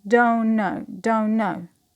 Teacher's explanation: we have the consonant cluster n, t, n. We omit the t, so it becomes don't know, don't know. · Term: consonant elision